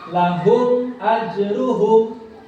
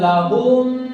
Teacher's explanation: Tidak boleh samar, tidak boleh ada dengung. Ya, harus jelas. Ketukannya harus jelas. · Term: idhar syafawi